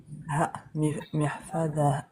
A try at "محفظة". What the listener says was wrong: C'est pas ha, il y a 2 points. Ta ضمتين. Ta ضمتين, ça fait quoi les deux? Mihfadatun.